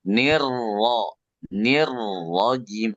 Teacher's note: Nah, kalau lebih bagus lagi sedikit, coba getarkan R-nya.